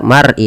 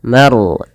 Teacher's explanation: Harus ditebalkan, jangan dibaca mar'i tapi maru. Ma-nya tipis, ro-nya tebal. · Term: ro tafkhim